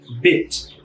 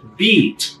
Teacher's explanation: outra coisa interessante de vogais curtas e longas é a qualidade do som enquanto bit Eu tenho um som mais fechado Beat Eu tenho um som mais aberto